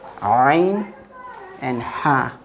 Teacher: Ain and Ha, middle part of the throat. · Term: throatal letters